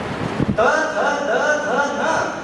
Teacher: ये सब दंत्य है, दांत को जिह्वा का स्पर्श किए बिना इनका उच्चारण नहीं होता